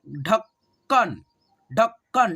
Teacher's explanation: जो क है ना आधा, उसको आप लोग अ के साउंड में नहीं पढ़ेंगे